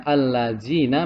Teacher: Allazina yaitu pengucapan huruf tebal seperti huruf dha. Nah, yang betul adalah tarkik atau tipis, yang salah adalah tafkhim